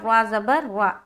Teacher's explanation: را کو پر رکھتے ہوئے پڑھیں گے کیونکہ را کے اوپر کیا ہے؟ زبر ہے۔